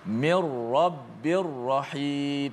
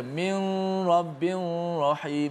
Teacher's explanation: Kerana nun, walaupun nun mati, walaupun tanwin, tak boleh masuk hidung di situ, sebab nun itu telah dimasuk secara total semuanya ke dalam huruf ra yang berlaku idgham bila gunnah.